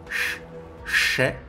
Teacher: Shè est prononcé avec la langue vers l'arrière, Shè, alors que Xie est prononcé avec la langue vers l'avant, derrière les dents.